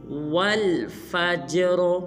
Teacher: اس حرف میں جیم کو قلقلہ کریں گے یعنی کہ ہلیں گے، اور آخر میں را کو پر ادا کریں گے